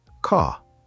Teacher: In British English, the R is often silent. You don't say it strongly. For example, the word car. · The R is very soft, almost quiet. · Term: soft R